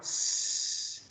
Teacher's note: Okay, and we're sort of dividing the tongue because sometimes when you produce a sound like s, you use the tip of the tongue over here in the alveolar ridge